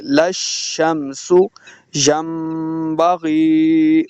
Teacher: سین کو سیٹی کے ساتھ پڑھیں گے